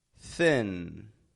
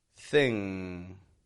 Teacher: the NG the back of the tongue is touching your soft pallet in the back of your mouth